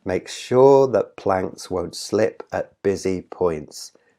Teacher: there are ten syllables in the line and the stress is on the second syllable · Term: iambic pentameter